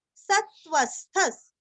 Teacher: सत्व स और त्व के ऊपर आघात स्थ स्थ का उच्चारण भी आधा अच्छे से करना है और